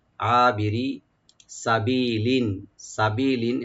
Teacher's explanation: সিনটাকে open রাখবেন, বি একালিফ টানবেন